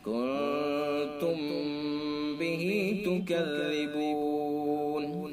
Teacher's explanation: کنتم بھی میم ساکن ہے، میم ساکن کے بعد با ہے، لہذا اس کے اندر کیا ہوگا اخفاء شفوی. اخفاء میم ساکن، اس کا دوسرا نام اخفاء شفوی، اس کے اندر بھی غنہ ہوتا ہے